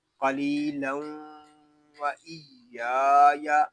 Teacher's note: پھر پڑھیں گے قلیلا وَإِيَّايَ پھر یہاں تنوین میں ادغام یر معلوم والا قاعدہ اپلائی کریں گے. پھر یا کو ایک الف تک کھینچ کر پڑھیں گے